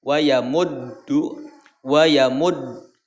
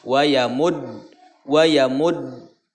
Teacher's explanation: Maka ketika mengucapkan huruf dal, nah, ya, maka yang pertama ditahan, wayamuddu, wayamud, tahan, ini syiddah, ya. Wayamud, ketika menyebutkan huruf dalnya itu tidak keluar nafas